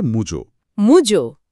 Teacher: ও বদলে উ হয়েছে আর আ বদলে ও হয়েছে। এই অন্যন্য স্বরসঙ্গতি অবশ্য তুলনামূলকভাবে কম দেখা যায়, কিন্তু এটা প্রমাণ করে যে স্বরধ্বনিগুলোর মধ্যে প্রভাবটা কতটা জটিল হতে পারে।